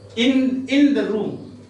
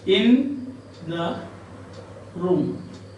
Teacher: in the room is an Anapaest, because you have got two short syllables and one long, or two unstressed syllables and one stressed syllable. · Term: anapaestic foot